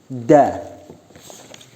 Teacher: Makharijul hurufnya bertempat pada punggung ujung lidah mengenai pangkal gigi depan atas.